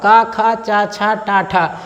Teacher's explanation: देखिए जो अघोष वर्ण होता है इनमें जो स्वर तंत्री होती है, स्वर तंत्रियों में कंपन नहीं होता है। स्वर तंत्रियों में उच्चारण करते समय कंपन नहीं होता है। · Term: अघोष व्यंजन